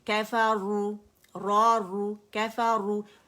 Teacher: را اگر دمہ کے ساتھ ہوگی تو بھی موٹی پڑی جائے گی، کیفارو، را رو، کیفارو، رو نہیں پڑھیں گے، کیفارو، ٹھیک ہے، زبان کی جڑ اٹھے گی پیالہ بنے گی، کیفارو. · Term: را موٹی